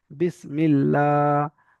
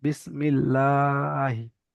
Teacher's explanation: আল্লাহ শব্দের লাম তাজদিদের পূর্বে অক্ষরে জের এসেছে, তাই আল্লাহর লামকে বারিক করে পড়তে হবে।